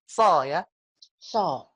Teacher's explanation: Sa kalau dioin jadi so. So kalau pangkal lidahnya kita naikkan jadi so.